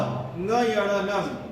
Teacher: इसको अनुनासिक कहते हैं क्योंकि नाक से इसका उच्चारण होता है।